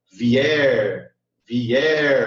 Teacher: o er sai mais forte. Então, esse er aqui é a sílaba tônica da palavra vier.